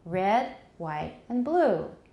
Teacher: So, things in a list, they'll go up, up, up, and down.